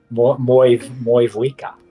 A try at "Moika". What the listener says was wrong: Moika, the V is silent.